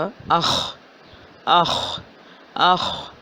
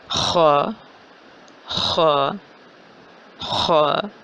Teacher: اس کا مخرج بنتا ہے حلق کا پہلا حصہ، زبان جہاں ختم ہو رہی ہے اور حلق شروع ہو رہا ہے، یعنی کہ ادنا حلق، اور اس کو ہم حلق نمبر 1 بھی کہہ سکتے ہیں۔